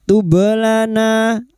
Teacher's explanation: Maka pada saat disukun bunyinya wakhtublana ba sukun yang mati asli di tengah kalimat qalqalah sugro. Jangan lupa dipantulkan. Tublana lana na fathah diikuti alif dua harakat mad th'i.